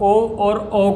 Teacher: ऐसे स्वर जिनके उच्चारण में कंठ और होठ दोनों का प्रयोग होता है वे कंठ्योष्ठ कहलाते हैं। इसके अंतर्गत ओ और औ को रखा जाता है। · ओ और औ जो है वो कंठ्योष्ठ स्वर कहलाएंगे, क्योंकि इनका उच्चारण कंठ और होठ के द्वारा हो रहा है।